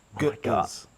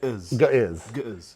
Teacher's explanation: G schwa, glottal stop, schwa z.